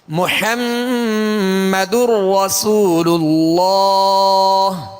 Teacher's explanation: را میں داخل کریں گے، محمد نہیں بلکہ محمدر۔ اب یہاں تنوین کی جو نون ساکن ہے اس کی آواز نہیں آئے گی، یعنی غنہ نہیں کریں گے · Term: ادغام